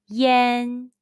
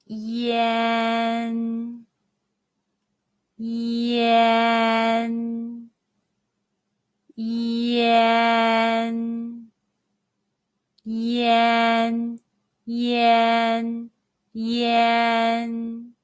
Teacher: When you see yan and ian in Pinyin, how would you pronounce it? The answer is yen.